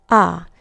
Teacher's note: so we never have that long a sound like we do in English